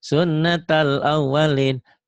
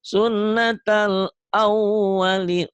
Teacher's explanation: Sun ditahan, dobel ditahan, dengung ke hidung. Karena nun nun ini gunah. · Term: Nun bertasdid